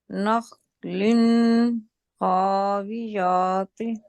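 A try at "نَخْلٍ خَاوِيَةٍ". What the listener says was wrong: यहाँ पे स्ट्रेस नहीं करेंगे क्योंकि हरूफ हल्की आ गया ना। यहाँ पर तो मैंने इस वजह से किया था क्योंकि इसके आगे कुछ नहीं। यहाँ पर हम स्ट्रेस नहीं ना कर सकते।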